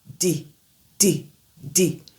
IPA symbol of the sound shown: d